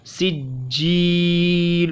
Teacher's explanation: जीम या ज़ेर जी में या मद्दा है तो इसको भी खींचना है